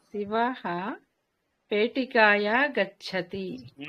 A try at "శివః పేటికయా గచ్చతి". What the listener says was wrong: కాయ కాదండి,